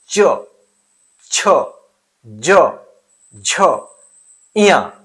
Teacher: च वर्ग च वर्ग का उच्चारण तालु से होता है।